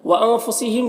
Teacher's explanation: وَأَنفُسِهِمْ کے نون میں اخفا ہوگا، نون کے آواز کو ناک میں چھپا کر پڑے گا، یہاں پر بھی میم میں اظہار شفوی ہوگا۔